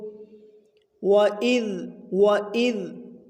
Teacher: ذال ہے، جو کہ حروف لثویہ میں سے ہے، اور اس کو نرم کر کے ادا کریں گے۔ زا نہیں ہے، سیٹی والے حروف میں سے نہیں ہے۔